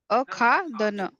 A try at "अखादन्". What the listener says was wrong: अखादन भगनी हलंत अस्ति अखादन न full stop अखादन. There should be a full stop.